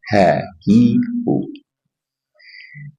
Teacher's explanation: karena di akhir ayat dia menjadi ha dari pangkal tenggorokan.